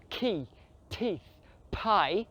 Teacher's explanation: em inglês eles usam tanto ar para falar key, teeth, pie